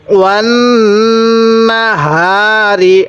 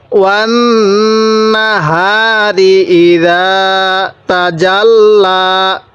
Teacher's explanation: হায়ের মধ্যে এক আলিফ টান দিব।